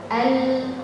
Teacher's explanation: kalau lam dia enggak ada getaran AL nah temponnya setengah aja di antara rakawah sama bainiah saat